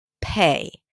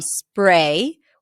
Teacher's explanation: the aspirated P, pay, where you feel like there's a little H that is different from spray, where the P does not pop as well